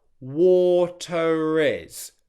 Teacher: you get a very subtle R sound that connects the two words together. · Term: subtle connecting R